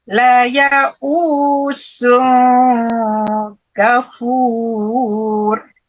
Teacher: La ya'usun itu jangan sun kan, tapi ada disambut kaf itu agak dengung